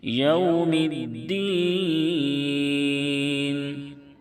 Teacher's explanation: مالکی یوم الدین، واو ساکن سے پہلے زبر ہے، واولین ہوگا، اس کو نرم آواز کے ساتھ معروف پڑھیں گے